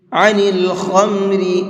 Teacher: خا کو منہ بھر کے پڑھیں گے اور را کو باریک کر کے پڑھیں گے